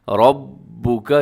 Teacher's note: را کے اوپر زبر ہے، را موٹی پڑی جائے گی